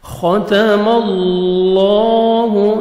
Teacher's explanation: گے، اللہ سبحانہ و تعالیٰ کے نام سے پہلے زبر ہے، لام کو اپنے موٹا کرنا ہے اور لام کو اپنے پر بھی کرنا ہے اور 1 سیکنڈ کھینچیں گے بھی · خاء کو موٹا کر کے پڑھیں گے، تا کو باریک پڑھیں گے ، اللہ سبحانہ و تعالیٰ کے نام سے پہلے زبر ہے،